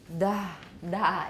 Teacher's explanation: during this breathy voicing the vocal folds are drawn into loose vibrations and do not come fully together · it's dental so we've got voicing and we've got a lot of air coming out at the same time